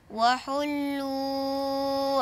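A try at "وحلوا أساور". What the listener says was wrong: لا احنا ما بنمدش المنفصل، احنا بنقرا ونذكر الساده المشاهدين بروايه بقصر المنفصل.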